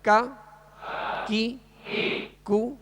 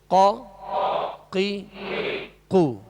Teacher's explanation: کاف کو جو ڈنڈی والا کاف ہوتا ہے اس کو باریک پڑھیں گے، اور قاف جو دو نقطے والا اس کو پر پڑھیں گے، موٹا پڑھیں گے